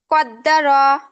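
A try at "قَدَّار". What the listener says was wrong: র একটু টান হয়ে গেছে, হ্যাঁ, কদ্দার, কদ্দার।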